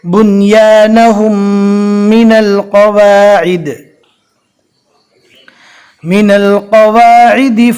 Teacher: یہاں پر آپ دیکھ سکتے ہیں میم ساکن کے بعد میم آ گئی، اب میم ساکن کا ادغام ہوگا، ملا کر گنہ کے ساتھ پڑھیں گے۔